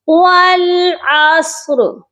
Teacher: والعصر، ٹھیک ہے، عصر نہیں کہنا، صاد کے اوپر آپ نے حرکت نہیں دینی، صاد آلریڈی ساکن ہے اور را کو بھی آپ نے ساکن کرنا ہے۔ والعصر، اب یہاں پر جو را ہے نا اس کو آپ نے پر پڑھنا ہے، ہیوی پڑھنا ہے۔